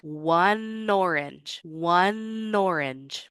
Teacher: Let's get rid of that glottal stop. We'll use our easy onset and link through it.